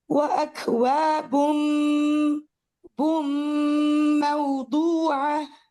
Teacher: ٹھیک، یہاں پہ میں نے کیا کیا ہے، ہم اس کو کیسے پڑھ رہے ہیں، ہم نون کو پورا کا پورا میم میں مرج کر رہے ہیں، اور جو غنہ کی آواز ہے وہ بھی میم کی آواز ہے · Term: کامل ادغام